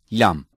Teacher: Lam is pronounced by touching the roots of the upper central teeth with the tip of the tongue.